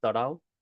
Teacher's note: Now, I know it's spelled tarav, but often V's turn into W. So it's tarav is how it's pronounced.